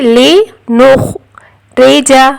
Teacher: نون کے بعد خوا ساکن ہے. خشخشی والی آواز آئے گی